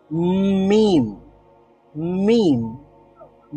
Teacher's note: তারপরে যদি আরেকটু চাপ দিয়ে, ঠোঁটটাকে আরেকটু চাপ দিয়ে সাউন্ডটা বের করি এবং কিছুটা সাউন্ড আমরা নাক দিয়েও বের হয়, নাক দিয়েও বের করি, তাহলে উচ্চারিত হবে প্রথমে মানে নাক দিয়ে বের হচ্ছে, তারপরে মুখ দিয়ে বের হচ্ছে